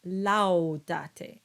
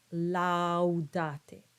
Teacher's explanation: So you have two clear ah sounds and with a little diphthong